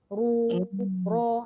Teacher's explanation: Ru dengan ro tebal. Dia tetap ada getaran.